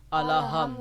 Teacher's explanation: دال کی پیش کو بھی اکثر لوگ کھینچ دیتے ہیں، جبکہ دال کی پیش کو کھینچنا ہرگز نہیں ہے. اس کو ہم لمبی آواز سے ہرگز مد کے ساتھ نہیں پڑھ سکتے.